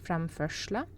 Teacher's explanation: Framførsla has the sh sound because it's next to an S. So R and S together makes a sh sound.